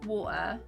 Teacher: in my accent, there's no T in there. So it'd be like a W, so an O for the water, for the W, like a circle, or A, and then an A, and then maybe like an E at the end, but there wouldn't be a T in there.